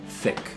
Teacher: got f which is a labiodental sound lip and teeth and th sounds so the tongue tip coming to the back of the front teeth or maybe even in between the teeth